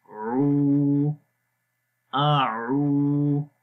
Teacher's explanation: عین کی آواز گلے کے درمیان والے حصے سے آئے، اور کیونکہ حمزہ کی آواز گلے کے سب سے نیچے والے حصے سے آتی ہے تو یہ دو مختلف جو ہیں وہ حروف ہیں۔